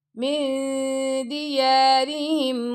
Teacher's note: اب را کے نیچے زیر ہے تو ہم را کو باریک پڑھیں گے